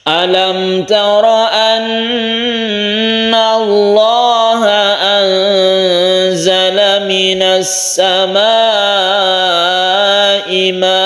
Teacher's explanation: Fathaten yang ada di hamzah ini harus dipanjangkan ketika kita waqaf. Jadi membacanya ma'a, panjangnya 1 alif, ma ini 2,5 alif, a ini 1 alif. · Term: mad iwad